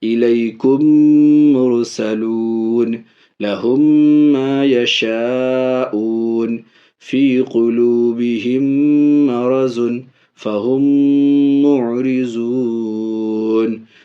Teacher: اور تیسرا قاعدہ نمبر 1 میں جو وہاں لکھا ہوا تھا وہ بلا ادغام شفوی، صاف صاف ادغام صفوی یعنی میم ساکن کو میم کے ساتھ ملا کر کے غنہ کے ساتھ